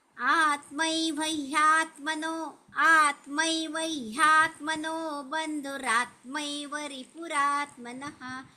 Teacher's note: आता मी वर ह चा आघात घेतला, कारण ते जोडाक्षर आहे म्हणून.